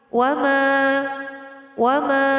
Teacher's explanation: Cara membacanya dengan memanjangkan mat tersebut selama satu alif dua harokat atau dua ketukan. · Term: mad tabi'i